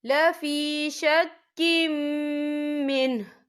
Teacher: میم جو ہے حروف یرملون میں سے ہے تو یہاں پر ادغام ہوگا تو ہم اسے غنّے کے ساتھ پڑھیں گے